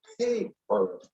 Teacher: And the second P does not have a puff of air coming out of it.